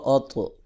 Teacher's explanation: حمزہ زبر طا اط، طا حروف قلقلہ میں سے بھی ہے جن کو ہلا کے پڑھا جاتا ہے، جب ساکن ہو تو اس کو ہلا کے بھی پڑھیں گے اور موٹا بھی پڑھیں گے کیونکہ حروف مستعلیہ میں سے بھی ہے۔